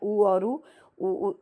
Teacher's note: इनका उच्चारण स्थल ओ ओष्ठ से होता है तो इसलिए इन्हें ओष्ठ स्वर कहा जाता है